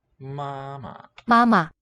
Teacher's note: The second one in these reduplicated words is going to be toneless, almost always.